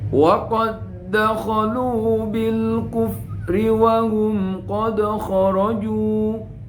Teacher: Wa qad enggak boleh dibaca wa qad dakhalu, tapi langsung masuk yang kedua, itu namanya idghamnya. Wa qad dakhalu bil kufri wa hum, wa qad langsung masuk, wa qad dakhalu bil kufri wa hum qad kharaju.